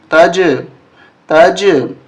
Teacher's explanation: قلقلہ ہوگا آواز ٹکرا کر واپس آئے گی